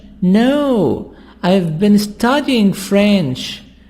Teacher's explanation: So, not teaching, but studying. So here, we make stress on studying. Why? Because this is opposite. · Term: Contrastive stress